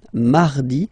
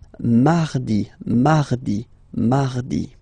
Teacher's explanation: So you can hear that you don't pronounce it that strongly, this R.